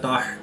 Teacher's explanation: حا کو حلق کے درمیان والے حصہ سے ادا کریں گے